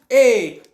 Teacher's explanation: अब तालव्य क्यों आ रहा है, तालव्य इसलिए आ रहा है क्योंकि आप बोलो ए तो आपकी जो जीभ है ना वो थोड़ी सी उठ गई, और स्पर्श कहां कर रही है, तालू में, स्पर्श कहां कर रही है, तालू में। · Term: कंठ तालव्य वर्ण